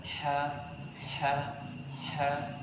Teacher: huruf ha tipis maka ee tenggorokannya itu bergerak ha ha ha ya begitu juga Ain semakhraj dengan huruf ha